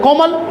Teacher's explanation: जैसे यहाँ पर देखा, जैसे यहाँ पर जैसे कौरन, क पर है कमल, कमल में क, ये देख रहे हो, कमल में क्रमशः क तथा म पर बल दिया जा रहा है, कोमल, तो क म पर ज़्यादा बल दिया है, ल पर कम बल दिया है